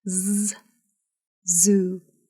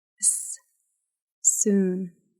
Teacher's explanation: You should be able to feel a buzz against your finger when you pronounce the voiced consonant z.